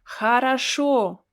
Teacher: it's pronounced like as if you have something in your throat and you want to get rid of it it sounds like an english h in some words like hat